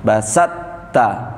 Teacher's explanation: Huruf to-nya kalah dengan huruf ta bertasydid.